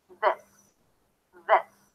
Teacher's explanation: We begin with a strong TH sound. Bring your tongue out to touch the upper teeth, release air and sound.